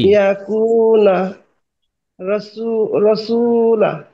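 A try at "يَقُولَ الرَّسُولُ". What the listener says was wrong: মাশাআল্লাহ মাশাআল্লাহ, সুন্দর হয়েছে তো।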